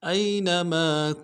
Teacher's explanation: حمزہ کو یا کے ساتھ ملانا ہے، یا لین بغیر کھینچے پڑیں گے، نون کو نون سے ادا کریں گے، میم کے ساتھ الف مدہ ہے، ایک الف دار میں کھینچیں گے.